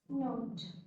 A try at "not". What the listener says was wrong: Not. हाँ, because आपने बोला note, आप बोलना है not. I cannot. She cannot. Not. So एक ये शब्द है not.